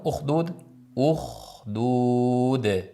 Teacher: h ni sirg'altirib oxirgi dni yoyib aytamiz. dudu bo'lib qolmasin.